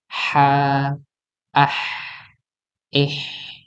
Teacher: h ini kita tempatkan pada tempatnya yaitu tenggorakan bagian tengah yang memang itu ada tekanan